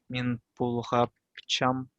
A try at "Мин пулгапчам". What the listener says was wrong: Во. Мин пулгапщам. Да. Во.